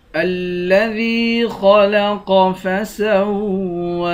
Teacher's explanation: ذال کو یا کے ساتھ ملا کر یا کو ایک الف کی مقدار کھینچ کر پڑھیں گے خا اور قاف دونوں کو موٹا پڑھیں گے الذی خلق فسوى